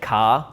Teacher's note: In New Zealand, we kind of remove the like R. Like we say like R instead of R, so it's just like car.